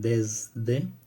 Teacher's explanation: Cuando se rodea de consonantes sonoras, como en desde, hay una cierta sonoridad que se contagia por la proximidad con esta consonante.